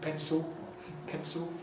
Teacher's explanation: we're getting the new trend of vocalization of the /l/ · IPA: [ˡpenso]